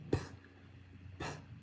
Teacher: when we talk about the bilabial stop we have the p sound